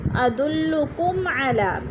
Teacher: میم ساکن کے بعد عین آ گیا حروف ہلکے میں سے، اظہار شفوی غنہ نہیں کریں گے